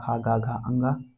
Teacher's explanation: कंठ से क वर्ग उच्चारित होता है